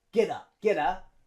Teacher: so the a turns to schah and we link it with get